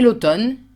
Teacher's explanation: it's written M-N-E and you only pronounce the N sound